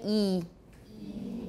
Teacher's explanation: that's our extreme high front vowel